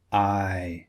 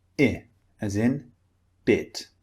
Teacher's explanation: So this is the difference, the main difference between the two. The first one is long. The mouth starts wide and closes. I. And the second one is short with a neutral mouth position.